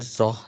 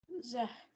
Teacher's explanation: Don't make it heavy. It's not zoh. It's zah.